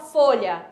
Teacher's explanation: quando eu falo folha o a é átono ele é fraquinho aqui